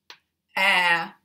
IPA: æ